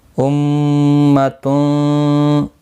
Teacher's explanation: امتون میم مشدد پر گنہ ہوگا، گنہ کے ساتھ پڑھیں گے۔